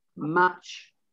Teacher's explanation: it almost the t rolls in with the ch sound